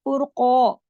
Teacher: कॉफ मोटा है तो अलिफ मद्दा भी साथ मोटा हो जाएगा।